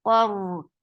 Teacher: Qaf is heavy, ra is heavy because ra there is fatha before ra.